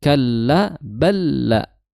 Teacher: lam sukun bertemu lam ya itu tasydid maka langsung idgham ya idgham mutamilain ya langsung masuk idgham sempurna idgham kamil bila